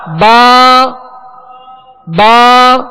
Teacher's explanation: آواز اور منہ کھول کر اور ایک الف کی مقدار میں اسے کھینچیں گے یعنی 2 حرکت کے برابر.